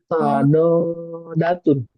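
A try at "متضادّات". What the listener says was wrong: Pakai syiddah. Di atas dalnya ada syiddah. Mutabaddatun. datun. Syiddahnya itu di atas dal. Mutado, masukin ad. Mutabod, gitu. Mutabod, Mutabod, datun, ya.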